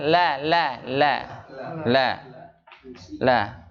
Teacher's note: Huruf lam itu huruf yang keluar tempat hurufnya di mana? Ujung lidah bertemu dengan gusi atas